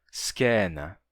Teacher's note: o ditongo ai eu pronuncio já monotongado em e